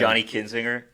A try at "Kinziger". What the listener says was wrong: Wait. Public service announcement. It is Kinziger. There's no N before the G. Not Kinzinger. Kinziger. There's no N.